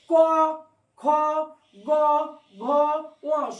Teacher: ক বর্গ উচ্চারণকালে কণ্ঠ থেকে ধ্বনি বা শব্দ বের হচ্ছে, মানে কণ্ঠে এসে আঘাত পাবে বা ধ্বনি শব্দ বেরোবে কণ্ঠ থেকে। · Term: কণ্ঠ বর্ণ